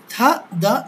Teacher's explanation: থা দা ধ্বনি দুইটিকে বলা হয় ড্যান্টাল কেন? কারণ এরা হচ্ছে দাঁত থেকে উচ্চারিত হয়।